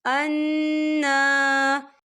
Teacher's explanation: نون کے اوپر کھڑی حرکات بھی ہے اور نون مشدد بھی ہے، یہاں پر غنہ بھی ہوگا اور ہم اسے 2 یا 3 حرکت کی بابر کھینچ کے پڑھیں گے